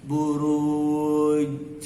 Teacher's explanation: Di huruf jim, buruj. Jadi kalau berhenti di huruf jim, jimnya harus mantul. Mantul namanya tadi qalqalah, buruj.